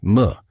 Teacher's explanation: You can feel the gentle buzzing sound as the air passes through your nose.